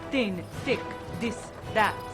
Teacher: that th sound thin thick this that become very dentalized